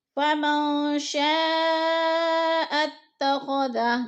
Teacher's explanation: شاء اتخذ، شاء پہ جو ہے مد ہو رہی ہے، مد متصل، حروف مدہ کے بعد حمزہ اسی کلمے میں ہے تو مد متصل یعنی 4 الفی مد ہے، ہم نے اس کو 4 حرکات کے برابر کھینچ کر پڑھنا ہے